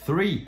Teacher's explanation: O exemplo clássico é o TH. O TH, por exemplo, de three, você coloca a língua para fora e você sopra, three, você não vibra as cordas vocais.